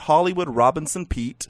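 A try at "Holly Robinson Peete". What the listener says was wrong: Did you call her Hollywood?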